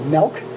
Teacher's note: he pronounces milk, M-I-L-K, as if it were an E sound there